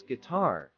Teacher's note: Pronunciation: pronounce guitar as tar with the emphasis on the second syllable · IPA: /ɡɪˈtɑr/